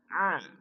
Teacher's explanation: Ain tenggorokan bagian tengah.